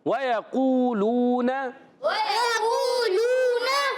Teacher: وَيَقُولُونَ واو پر زبر ہے, یا پر زبر ہے, حرکات کو نہیں کھینچیں گے مگر وَيَقُولُونَ, قو اور لو واو مدہ ہیں دونوں, ایک الف کھینچنا ہے.